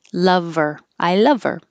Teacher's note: we can get rid of the h and the pronoun her and then connect it